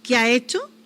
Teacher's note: ¿Qué ha hecho? y nos comimos la s